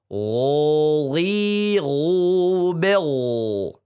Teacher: ghain tidak ada suara serak-serak seperti kho ya.